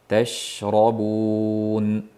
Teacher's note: tashrobun shni yaxshilab pshillatib sirg'altirib o'tamiz